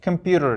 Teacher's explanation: Amerikanslar computer deb talaffuz qiladi. Computer bu mana shu TER harflarida ketma-ketligida flap T degan tovushni qoidasi bor Amerikanslarning aksentida.